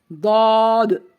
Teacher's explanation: زبان کی کروٹ اور اوپر کے 5 داڑوں سے لگے تو داد ادا ہوتا ہے